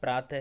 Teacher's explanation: विसर्ग शब्द जो हैं वो कंठ से बोले जाते हैं, अर्थात प्रातः है, तो यहाँ पे विसर्ग का मतलब होता है हा की आवाज़, ठीक है।